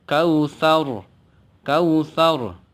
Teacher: dibaca tafkhim namanya tebal sekali lagi ro yang dibaca tafkhim atau tebal